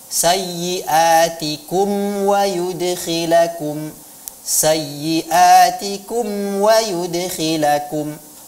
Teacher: Jadi benar-benar kedua bibir kita itu sudah dikatupkan, barulah datang huruf yang setelahnya ya. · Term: mim sukun